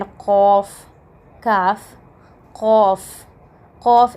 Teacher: the articulation point is the deepest part of your tongue touches the upper palette